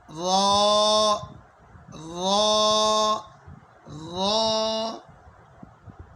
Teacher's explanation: را پر زبر ہے تو زبر کی وجہ سے پر ہوگی